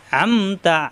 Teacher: আ কণ্ঠনালীর মাঝখানে চাপ দিয়ে